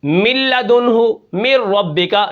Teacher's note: نون ختم ہو جاتی ہے، ٹھیک ہے، یہ ادغام ہے، ایک حرف دوسرے کے اندر داخل ہو جاتا ہے